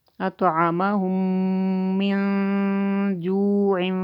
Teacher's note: یہاں پہ میم ساکن کے بعد میم آئی ہے تو ادغام شفوی ہو رہا ہے